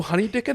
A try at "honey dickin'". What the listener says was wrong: It's because you're so white, you pronounce the G. That's why.